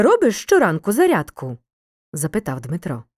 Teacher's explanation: слова автора після прямої мови читаємо швидше і трохи зниженою інтонацією тренуємося постав розділові знаки в реченнях і з прямою мовою їм